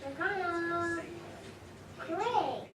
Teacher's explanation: there is another instance of a deletion of the voiced alveolar stop duh at the end of kind